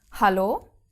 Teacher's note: the German H is aspirated at the beginning of a word like in Halo you you actually have the the breathing out